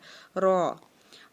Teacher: रॉ को हमेशा पुर पढ़ा जाता है, यानी कि उसकी आवाज़ जो है वो मुंह भर के अदा की जाती है